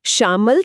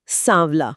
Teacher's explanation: तत्सम का श मतलब तालव्य श तद्भव में स यानी दंत्य स बन जाता है।